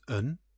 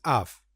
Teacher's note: Around 20% of the words we use are not pronounced as they are spelt. Instead, we say them in a special reduced form. And this reduced form often uses the schwa sound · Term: weak form